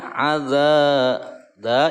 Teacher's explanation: dibaca Dua harokat karena Mad Thobi'i